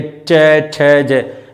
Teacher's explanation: और ये च, छ जो दांतों के जस्ट ऊपर जीभ लगती है, च, छ, ज ये होते हैं हमारे तालव्य व्यंजन।